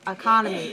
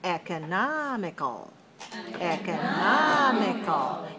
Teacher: Yes, but we see that in terms of the stress, it's different because for economy, it's stressed on the second syllable, but for economical, it's stressed on the third syllable.